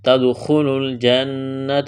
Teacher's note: غنہ کریں گے، آواز ناک میں چھپائیں گے